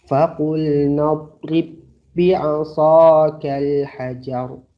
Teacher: Maka jawabannya tidak perlu ada pantulan di ba pertama.